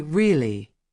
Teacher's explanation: When someone says really with a high tone, it means they are surprised. When they say really with a low tone, it means they already knew.